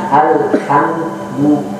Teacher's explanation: jangan sampai ada pantulan ketika mengucap lamnya alhamd. Itu jangan sampai ada pantulan ketika mengucap dari lam, mim dan lain sebagainya. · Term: tamsik